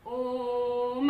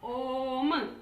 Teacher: प्लुत स्वर। इसका उच्चारण में हमें 3 गुना अधिक समय लगता है ह्रस्व स्वर की अपेक्षा।